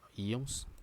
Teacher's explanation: Ó, sílaba forte é a penúltima. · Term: paroxítonas